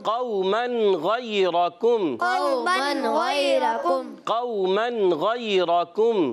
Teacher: इज़हार अल की नून को ज़ाहिर करना है